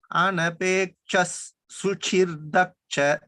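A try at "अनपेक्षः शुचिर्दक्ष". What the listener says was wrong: It's not shru, it's shu. Shuchir. After shuchi, after chi, we have to say ra. Shuchir.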